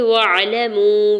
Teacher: واو ساکن سے پہلے میم کے اوپر پیش اور واو ساکن کے اوپر مد منفصل بھی ہے، 4 سے 5 حرکت کھینچ کے ادا کریں گے